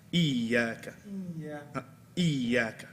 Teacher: don't read the ya from the nose. Ya should be a clear letter.